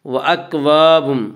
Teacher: مرفوعہ فيها سرر مرفوعة وأكواب موضوعة وأكواب الف مدہ الف ہمیشہ مدہ ہوتا ہے، الف سے پہلے ہمیشہ زبر ہوتا ہے، الف مدہ کو ایک الف کے برابر کھینچ کر پڑھیں گے۔